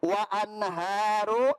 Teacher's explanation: nun mati bertemu dengan ha, maka dibaca jelas, tidak boleh dengung